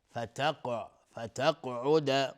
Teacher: قاف هم از حروف استعلا است و اینجا قلقله میخواد